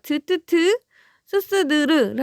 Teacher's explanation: 그러면 혀끝 소리에서 나는 거, 즉 밑잇몸과 혀끝에서 나는 소리가 이제 혀끝 소리인데 우리 보세요. 드뜨트 스스드르를 하게 되면은 이 혀 끝이 윗잇몸에 닿아요.